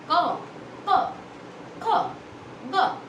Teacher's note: तो ये मेरे आवाज़ जो निकली वो कंठ के द्वारा निकली, यानी गले से निकली। तो ये हमारे आते हैं 5 वर्ण जो होते हैं वो कंठ वर्ग, कंठ में आते हैं क वर्ग में।